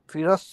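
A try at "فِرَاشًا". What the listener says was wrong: ফি র লম্বা হবে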